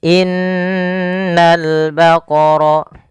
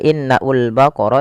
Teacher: Pada alif lam di sini lamnya ditampakkan dengan jelas. Ini bukan innaul baqara tapi langsung ke lam. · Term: alif lam qamariyah